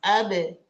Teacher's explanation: Bibir atas sama bibir bawah nempel lepas. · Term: kolkolah